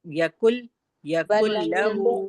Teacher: دیکھیے یقل لہو کا لام کو ہم باریک پڑھیں گے، پھر سے پڑھیے، کاف کو بھی باریک پڑھیں گے، ولم يقل له كفوا احد.